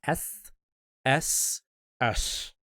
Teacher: This is the effeminate lisp. And all I'm doing is making my S further up at the front of my mouth.